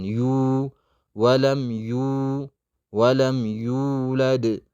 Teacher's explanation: መደድ ጠቢዒ ያለ ሁለት ሐረካ ያክል ዩ እንስባታለን።